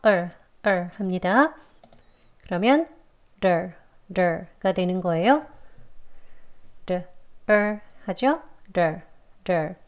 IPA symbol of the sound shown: ər